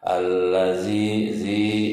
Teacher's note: sebelum ya sukun berharokat kasroh. Hukum bacanya mad tabi'i. Berapa panjangnya? Panjangnya 2 harokat.